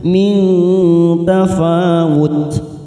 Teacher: nun sukun bertemu ta. Ikfa aqrab kita samakan bunyi nun sukun 3 ketuk